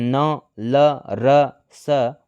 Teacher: वत्स ध्वनियों के उच्चारण में जीहवा की नोक दंत पंक्तियों के ऊपरी भाग का स्पर्श करती है। हिंदी में न ल र स वत्स ध्वनियां हैं।